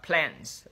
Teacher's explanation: plants, chúng ta âm p thì chúng ta bật hơi ra